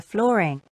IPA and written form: ˈflɔː.rɪŋ (flooring)